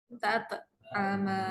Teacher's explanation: Tat ada bunyi te. Jangan baca tot. Dia ta tu masih lagi nipis. Tat. Ya, jangan bila dengar mengaji anda tengok dia baca salah ke tidak Sebenarnya disebabkan tanwin jumpa dengan hamzah wasal kena ubah.